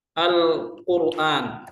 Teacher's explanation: Ra sukun sebelumnya dhammah. Wajib dibaca tafkhim, tidak boleh dibaca tarqiq.